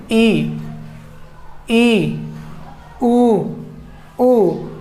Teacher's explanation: उच्चारण करते समय मुख बिल्कुल कम खुल रहा है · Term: संवृत स्वर